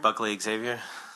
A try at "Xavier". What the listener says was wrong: Xavier, not Xavier. You do Xavier, that's too many syllables, and it loses the pentameter.